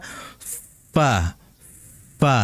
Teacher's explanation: itu ada udara yang keluar dan itu disebut dengan hams, ya. Itu udara yang keluar dari makhrajnya.